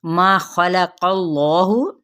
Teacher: پہ ادغام مع الغنہ کا قاعدہ، ما خلق اللہ، اس میں جلالہ پور پڑھا جائے گا اور قاف بھی یہاں پہ موٹا پڑھا جائے گا